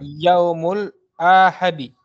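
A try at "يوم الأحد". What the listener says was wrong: ahadi. Hanya pendek ya.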